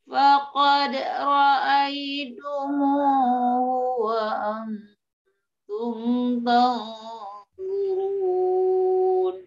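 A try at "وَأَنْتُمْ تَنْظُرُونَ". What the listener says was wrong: Wa antum ta, tanya itu udah ikut tebal, Bu. Tanya tipis, zonya saja yang tebal. Wa antum tanzurun, tanzurun.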